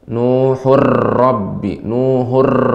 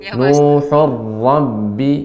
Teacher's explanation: pengucapan ra tidak banyak getarannya, ya, sedikit dan halus. Tidak boleh Nuhur Rabbi, Nuhur, tapi lebih sedikit, lebih lembut.